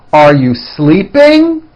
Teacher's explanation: notice how my voice goes up at the end of a question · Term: rising up